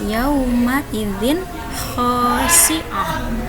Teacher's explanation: Kita lihat jika terdapat nun mati atau tanwin bertemu dengan salah satu huruf izhar yang 6 ini, maka dibacanya jelas, tidak didengungkan ataupun tidak dimasukkan ya